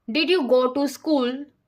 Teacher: The yes or no questions use a rising tone at the end.